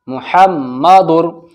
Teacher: محمدر، را زبر را کے اوپر زبر ہے تو را موٹا پڑھا جائے گا